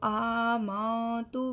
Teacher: نون ساکن کے بعد جب تا آ جاتی ہے تو وہاں پر ہم غنہ کرتے ہیں، یعنی کہ ناک میں آواز لے کے جاتے ہیں